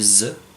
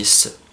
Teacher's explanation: Pour faire la différence, on peut dire en continu et en alternant S et Z, en gardant la main placée ici, et on se rend compte que quand on dit Z, on sent qu'il y a une vibration dans la gorge qu'il n'y a pas quand on dit S. C'est la différence entre les deux.